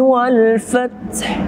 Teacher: Alif lam izhar qamariyah, zahir izhar, kita bacanya wajib dengan dibaca alif lam. Tidak boleh kita masuk langsung kepada huruf fa.